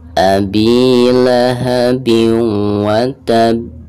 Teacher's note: Nah setelah ditahan dua harokat langsung pantulkan ya karena ini huruf Qalqalah